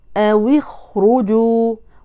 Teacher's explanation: حفص يحرك الواو اللينه لغير الجماعه بالكسر فتقرا او اخرجوا وبعض القراء الاخرين حركوها بالضم بالضم بالضم او